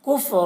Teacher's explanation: را کو پر پڑھیں گے، را کے اوپر زبر ہے